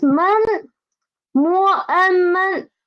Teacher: it is a neutral tone, so we need to read it soft and quick